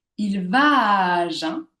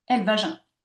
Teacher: je prononce trois fois le son A dans trois syllabes qui se suivent sans qu'il y ait de silence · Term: l'enchaînement vocalique